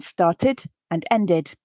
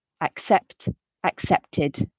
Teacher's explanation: pronounce that letter e in the ed ending as well as the letter d and end up with an additional syllable